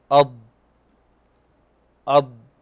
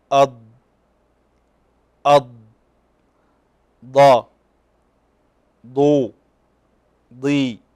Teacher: ويكون صوت الاستطالة في بدايتها قويا ثم يتضاءل بالتدريج حتى ينتهي